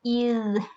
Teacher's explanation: اذ، یہاں پر ذال پہ آواز جاری رہے گی، نرمی سے ادا کریں گے، سختی نہیں ہوگی اس میں